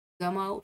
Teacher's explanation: जमाव शब्दातील ज हा वर्ण दंतमूलीय आहे, म्हणजे ज हा दाताला चिकटतो.